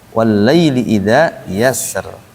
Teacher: Di kalimat yasr rohnya kata para ulama ditipiskan karena asalnya yasri